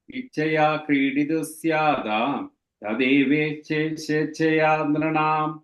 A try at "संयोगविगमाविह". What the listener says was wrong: that end of the first line, vigamaviha, ha. Viha, yeah. You are ending it at B, that ha is there, that's all. संयोगविगमाविह.